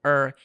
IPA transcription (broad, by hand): ɚ